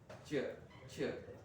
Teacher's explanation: palatal sound front of the tongue the front raised against hard palate ch okay அந்த tongue front போயிட்டு hard palate touch பண்ணும் okay